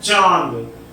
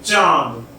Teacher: अनुस्वार यानी इस शिरोरेखा के ऊपर बिंदु, चंद्र बिंदु नहीं, केवल बिंदु के उच्चारण में वायु नाक से निकलती है। जब हम इसको बोलते हैं चांद, तो यहाँ वायु नाक से निकलती है